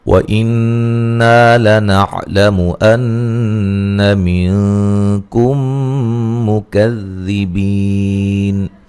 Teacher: یہاں نون مشدد پہ غنہ ضروری ہے